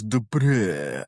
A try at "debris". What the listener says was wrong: Debris. You're putting the wrong emphasis on the syllable.